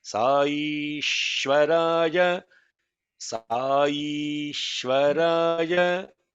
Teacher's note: Sai is long vowel. E is long vowel. Shwa is held back because it is compounded.